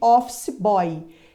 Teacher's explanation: vier apoiada em uma vogal é o caso de office boy esse Y tem som de i está na mesma sílaba do Ó está apoiado nesse ó Então esse Y é uma semivogal